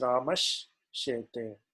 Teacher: So the sa becomes sha. Evam atra ramas becomes ramash shete. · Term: shakara adesha